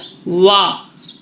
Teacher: اچھا واو ہونٹوں کی گلائی سے ادا ہوگا. واو آپ کو آواز آ رہی ہوگی، محسوس ہو رہا ہوگا پورا ہونٹوں کا منہ کا زاویہ گول ہوگا.